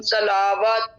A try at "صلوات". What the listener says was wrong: صلواتم لام کے اوپر صرف ایک زبر ہے. لام کو لمبا نہیں کرنا. جو واو کے اوپر کھڑا مد ہے اس کو لمبا کرنا ہے. صلواتن.